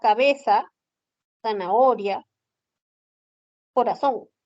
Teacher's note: no pronunciamos ese sonido No lo hemos reemplazado por la s entonces para nosotros será cabeza zanahoria corazón con el sonido de s ya no usamos el sonido de la de la interdental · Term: ceseo